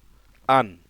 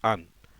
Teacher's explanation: এই তানবিনের ভিতরে লুকায়িত নুন সাকিন, এই নুন সাকিনটার মাধ্যমেই তানবিনটা উচ্চারণ হচ্ছে।